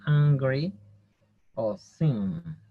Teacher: La N, este sonido se hace más con la nariz. Es como una N, pero que el sonido se realiza dentro de la nariz.